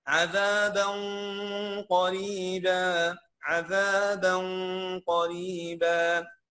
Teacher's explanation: وخلي بالك الغنه مختلفه، عذابا الغنه مفخمه · التنوين جا وراها في القاف بقي حرف اخفاء